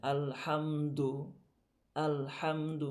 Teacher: পরিপূর্ণ দু হতে হলে কি হতে হবে মুখটা একটু গোল করতে হবে